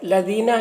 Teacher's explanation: یہاں پر یا ساکن سے پہلے زیر ہے تو یا مدہ ہوا، اسے بھی ایک الف کے برابر کھینچ کر پڑھیں گے